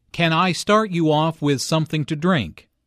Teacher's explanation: Notice how the question starts with can. Since this is a yes-no question, the intonation rises at the end.